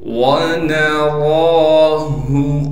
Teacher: रा पर कड़ा ज़बर होने की वजह से रा को एक अलिफ की मिकदार खींचेंगे भी और रा को मोटा करके पढ़ेंगे।